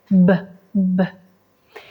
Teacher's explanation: la p es sorda porque no produce vibración acá mientras que la B es Sonora y genera una leve vibración en la garganta